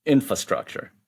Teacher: But what I hear a lot of people saying in business, they drop that internal R sound after the first syllable and they just say infrastructure.